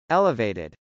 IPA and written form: ˈɛləv.eɪtɪd (elevated)